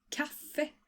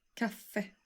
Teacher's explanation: just like in many other cases you stress both parts of the word here